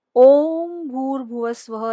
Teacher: इसमें यह ओम जब उच्चार करते हैं तो वहां पे प्लुत स्वर का प्रयोग होता है।